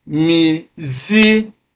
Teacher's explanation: So stress is on the second syllable from the end of the word.